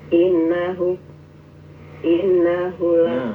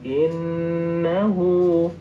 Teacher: Innahu innahu nunnya berdengung.